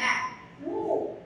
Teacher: எழுத்து ஒலிக்கிறது ஆ அப்படின்னும்போது அந்த சவுண்டு அந்த ஒளி என்ன ஆகுது ஒலிக்கிறது உன்னும் எழுத்தை ஒலிக்கும் பொழுது இதழ்கள் குவிகின்றன